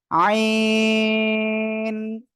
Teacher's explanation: গলার মধ্যে হালকা চেপে আমরা উচ্চারণ করব, 4 আলিফ টেনে উচ্চারণ করব এই অক্ষরটা, আইন। সবাই একসাথে জোরে বলেন।